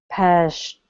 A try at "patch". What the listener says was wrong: Almost. Instead of pash, it's ch. It's a strong sound. It's a puff of air. Patch.